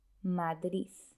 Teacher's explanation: algunos pronuncian una Z en lugar de una D, Madrid. El fonema S es un sonido que existe en francés.